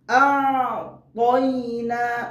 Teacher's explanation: যখন আইন উচ্চারণ করব তখন হলকের মধ্যখান হইতে আইন উচ্চারণ করতে হবে